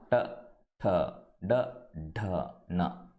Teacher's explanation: మూర్ధన్య అంటే మిడిల్ పాయింట్లో ఆ టంగ్ ట్విస్ట్ అయ్యి చెప్తాం.